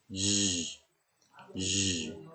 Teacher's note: The sound is made by partially blocking the air, Z, blowing between the blade of your tongue and the roof of your mouth